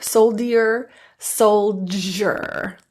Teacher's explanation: The D in soldier is actually pronounced as the J sound, j, which is an affricate, meaning it has two different sounds. One is a D and the other is the j.